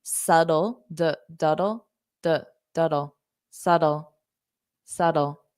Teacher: now you can pronounce it more of a s d so that t can become a flat T and it could sound more like a d